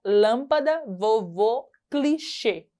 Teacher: Acento circunflexo manifesta-se pelo som fechado, retratado pela vogal tônica